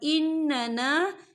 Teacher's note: ربنا اننا، یا دیکھیے ان، یہاں نون مشدد ہے تو یہاں پر غنہ ہوگا